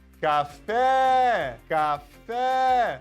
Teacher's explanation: Perceba que esse fé, tá? É a sílaba forte. Ela está na última posição. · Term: oxítona